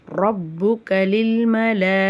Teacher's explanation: மலாஇகத்தில மத்தே முத்தசில் இருக்குது. அப்போ அந்த மத்தை வந்து நம்ம 6 அலிஃப் வரைக்கும் நல்லா நீட்டி ஓதணும்.